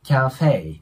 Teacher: 最初の▁CA▁の部分はアート▁A▁の中間音なので、まあ、日本語で言うキャーに近い感じで▁OK▁です